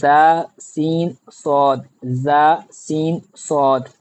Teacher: ان 3 حروف کو ادا کرتے وقت سیٹی کی طرح آواز نکلتی ہے، اس لیے ان حروف کو حروف صفیریہ یعنی سیٹی والے حروف کہتے ہیں۔